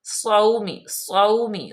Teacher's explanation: صاد پہ سیٹی کی آواز آئے